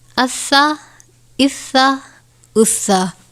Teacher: سین حروف صفیریہ میں سے ہے، جس کو پڑھتے وقت سیٹی کی طرح آواز نکلتی ہے